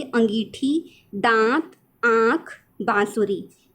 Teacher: बोलने के लिए ध्वनि जो होती है वो नाक और मुंह दोनों से निकलती है, तो वो अनुनासिक ध्वनि कहलाती है